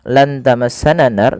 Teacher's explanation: Kemudian ketika melafalkan lan tamassanan naru, pada lafal nunnya lan tamassana nar, nunnya disamarkan kepada huruf ta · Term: ikhfa